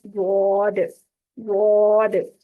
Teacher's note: जुबान के किनारे को, यानी जुबान की करवट को दाएं या बाएं जानब ऊपर की दाढ़ों की जड़ जो मसूड़े हैं उन पे लगाएंगे तो ये गॉड अदा होगा, चाहे राइट साइड पे या लेफ्ट साइड पे, जौन सी साइड पे आपकी जुबान मुड़ जाती है इजीली उस साइड पे उसको मोड़ के तो ये गॉड अदा करेंगे।